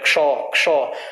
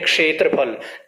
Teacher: पहले क का उच्चारण होगा थोड़ा सा, फिर उसके बाद श का उच्चारण होगा। · तो इसलिए जब इसका उच्चारण करते तो हम क्ष के रूप में करते, क्ष क्ष, हल्का सा क बोलेंगे फिर श बोलेंगे